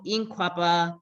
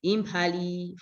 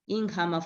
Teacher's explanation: when they are preceded by a nasal so you see that all forms where there is a nasal and a voiceless stop there will be an aspiration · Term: postnasal stop aspiration